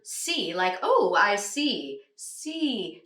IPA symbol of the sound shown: i